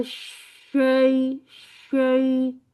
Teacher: वसतुल जब लिसान। हनकुल आला के वसतुल लिसान जब हनकुल आला के करीब जाती है तो शीन अदा होता है। और इसमें क्या करना है, होंठ फैलाने नहीं और आगे नहीं लेके आने।